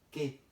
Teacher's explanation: No estoy pronunciando la U, de tal manera que tampoco hay diptongo.